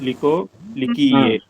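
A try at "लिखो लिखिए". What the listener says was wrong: அவ்வளவுதான் G, correct.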